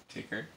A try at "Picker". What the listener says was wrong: No. Picker. No. Picker. P-I-C-K-E-R. No. It's a P. Picker upper. No. P-I-C-K-E-R. Picker. Picker. P-I-C-K-E-R. Picker. No. Picker.